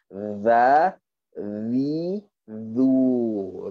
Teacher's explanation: bila kita tekan tu maka akan ada getaran dekat muka kita. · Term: zal